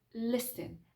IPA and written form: ˈlɪsn (listen)